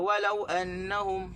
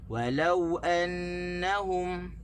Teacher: Walau, kita tak boleh baca walau annahum, tak boleh tekan di waw, kita kena tekan di lam